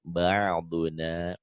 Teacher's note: Jadi ke ain itu ada di tenggorokan ya